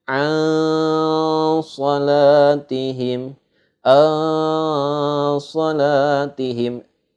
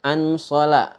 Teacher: hukum huruf nun mati bertemu dengan shad itu cara bacanya samar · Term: ikhfa